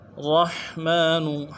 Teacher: ہا کو واضح کریں گے، میم کے اوپر کھڑا زبر ایک الف مقدار میں کھینچیں گے